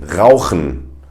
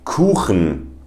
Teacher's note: It's again from the back of the throat, and it kind of sounds a little bit Arabic if you ask me. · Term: the hard CH